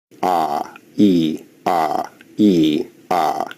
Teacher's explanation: In terms of height, vowels are either considered high, mid, or low. E is an example of a high vowel and a is an example of a low vowel.